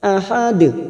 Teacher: ujungnya kita pantulkan karena ada huruf Dal yang mati di akhir kalimat dan dibaca wakaf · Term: Qalqalah Kubro